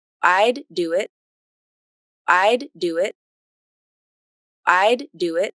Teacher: So right there, you'll notice this is the end of the D in I'd. There's a break in the voicing when I do the release, and then here the D picks up again in the word do. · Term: released D